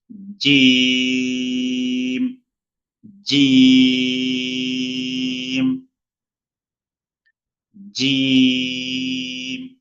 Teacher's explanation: জিহ্বার মধ্যকান তার বরাবর উপরের তালুর সঙ্গে লাগিয়ে, জিহ্বার মাঝখান তার বরাবর উপরের তালুর সঙ্গে লাগিয়ে উচ্চারণ করতে হবে।